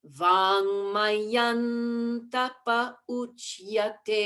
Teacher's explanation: there you have your N, the tongue at the teeth